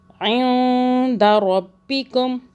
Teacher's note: را کو موٹا پڑا، را کو پر پڑھنا ہے، پر مطلب موٹا · اخفاء کا قاعدہ نون کو چھپائیں گے تالو سے ٹچ نہ کر کے